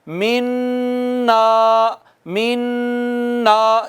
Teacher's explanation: ادغام کے ساتھ ساتھ ناک میں آواز بھی جاتی ہے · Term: ادغام بالغنہ